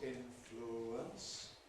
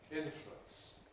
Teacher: You can say influence, 3 syllables, influence, or you can compress it to 2 syllables, influence.